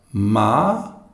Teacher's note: we have another ma where the tone is rising